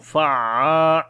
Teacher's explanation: Fa we connect with the ain, fa'a, and also we long due to alif madda.